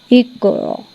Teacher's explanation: یہاں پہ را کو جو ہے آپ نے پر کر کے پڑھنا ہے. یہاں پہ فوکس را کو کرنا ہے آپ نے زیادہ اور اس کی پریکٹس کرنی ہے.